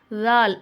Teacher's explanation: நாவுடைய நுனிப்பகுதி மேல் பற்களுடைய ஓரத்தை உரசும் போது தால் அப்படிங்கிற எழுத்து வெளியாகுது